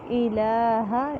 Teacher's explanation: ہا کو لمبا نہیں ہونے دینا کیونکہ صرف زبر ہے